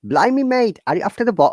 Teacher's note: even in the cockney accent they don't pronounce t and r